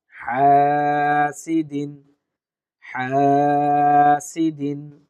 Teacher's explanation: টানবো এক আলিফ, হা, সিদিন দ্রুত উচ্চারণ করব